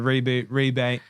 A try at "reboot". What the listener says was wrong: Yeah, you sound like you said rebate there.